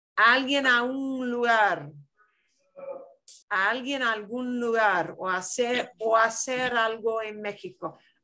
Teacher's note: It's just that one vowel sound runs into the next one, and they are going to slide together